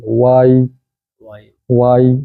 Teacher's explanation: وجہ کہ یا کی آواز نیچے، زبر کی آواز اوپر ہوتی ہے. آواز پہلے زبر کی اوپر جائے گی پھر نیچے جائے گی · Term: یا لین